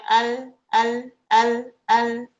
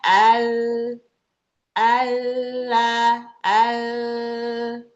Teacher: Itu namanya inhiraf. Jadi suara yang harusnya lurus berbelok lewat samping kanan dan kiri. Karena depan terhalang sama sisi lidah gitu.